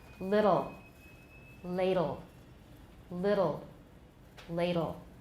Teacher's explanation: first of all i have a tap i don't have a t it's a tap